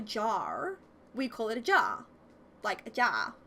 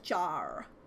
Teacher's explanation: Whereas when I've heard maybe like music or American family talk, they're like mirror, like they put the real emphasis on the R noise, whereas Australians, we forget the R